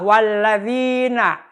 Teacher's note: mengucapkan dalal walladzi tapi yang benar yang sebenarnya itu adalah walladzina dinya panjang dua harkat yaitu Mad thi'i dua harakat